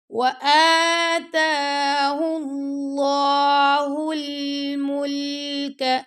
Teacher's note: اب اللہ کی لام سے پہلے دمہ آ گیا یعنی کہ پیش آ گیا تو ہم اس کو اللہ کی لام کو موٹا پڑھیں گے